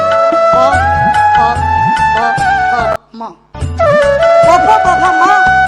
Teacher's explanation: पवर्ग है वो ओष्ठांग है। प प प प म, प फ प फ म दोनों होंठ मिलाकर बोले जा सकते हैं।